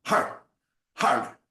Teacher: we try to roll the R like a Spanish R. So you'll feel that R as you lift the diaphragm, and the R will hit the top of the soft palate.